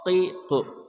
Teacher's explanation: qaf ya dari pangkal lidah